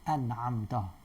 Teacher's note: Ada bukti dia ada gunnah ialah ada suara nak keluar daripada hidung ketika kita menyebut an'amta.